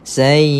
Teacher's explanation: kita baca panjang dua harakat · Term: mak badan